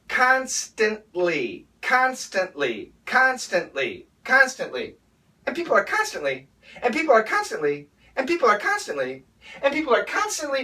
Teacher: And then from that position, we make the L sound. That would be a dark L.